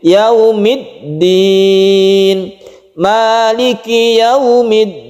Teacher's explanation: yaumiddin tekan di dal ini karena dia itu bertasydid